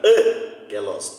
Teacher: porque o acento está na proparoxítona